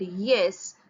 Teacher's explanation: the initial sound in the English word yes, that is a y, can be produced at the hard palate